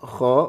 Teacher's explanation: mengalir dan seperti orang ngorok memang suaranya dan tebal